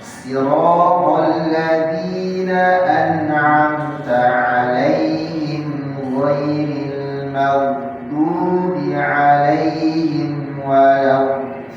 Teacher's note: Jadi tawasuth di ain, di makhrajnya ain, dibedakan dengan hamzah.